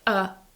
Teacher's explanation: the strong form of this word is a but the weak form is uh